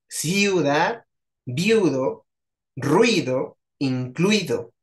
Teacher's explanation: vean como la i y la u se pegan en una sola sílaba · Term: diptongo